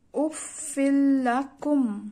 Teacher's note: তানভিনের পরে লাম, তাই গুনহা ছাড়া মেলাতে হবে